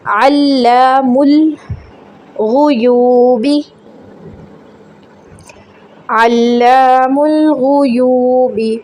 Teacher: تو یہاں پہ دیکھیں کہ حرکت کیا ہے، یہاں پہ پیش کی حرکت ہے، آگے بھی یو پہ بھی پیش ہے، اور واو سیکنڈ سے پہلے پیش ہو تو واو مدہ کہلاتا ہے. 3 سیکنڈ کے لیے لمبا کریں گے.